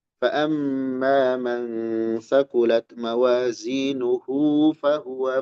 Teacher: Maksudnya kalau wakaf faammaat mawazinuh ini jadi sukun ya. Tapi kalau disambung mawazinuhu fahua hu jadi panjang kalau disambung dengan ayat setelahnya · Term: sillah